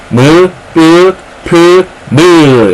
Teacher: 두 입술 사이에서 나오는 소리예요 그래서 입술 소리